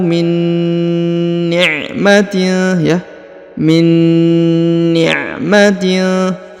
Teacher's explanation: Kemudian nun sukun bertemu dengan nun bertasdid, maka ditahan dan ditekan 2 harokat ya. Didengungkan juga, ditahan dan ditekan 2 harokat.